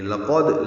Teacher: لقد لام باریک قاف پر دال ساکن پہ قلقلہ ہے